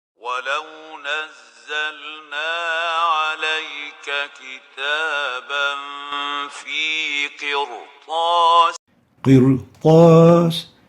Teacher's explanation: We realize that the ra has tafkheem, and this is because of the ta, which is an elevation letter